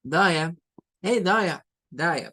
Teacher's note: Y no es una A, no es que sea una A, es un schwa realmente.